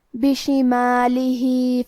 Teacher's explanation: کلمت بشمالہ کے آخر میں ہا کے نیچے کھڑی زیر ہے، یہاں بھی حکم ہے مد صلہ صغرا، تو ہم اپنی آواز 2 مد کے برابر لمبی کریں گے